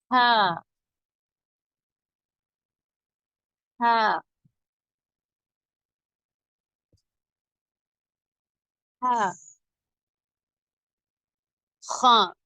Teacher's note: நாவின் கடைசி பகுதி மட்டும் சற்று மேல் உயர்த்தி குரல் நடுத்தொண்டையில் இருந்து அழுத்தமாக உச்சரிக்க வேண்டும் உதாரணமாக வேகமாக ஓடினால் எப்படி இழைக்குமோ அதுபோன்று உச்சரிக்க வேண்டும் ஹா ஹா ஹா